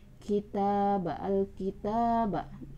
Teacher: ta di sini adalah Mad Thabi'i dengan dua harakat.